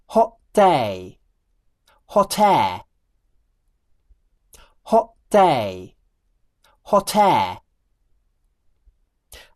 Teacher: I'm using a glottal stop for the phrase 'hot day' but not for the phrase 'hot air'. Using a glottal stop for phrases like 'hot air', where the /t/ consonant comes at the beginning of a syllable, is considered improper pronunciation.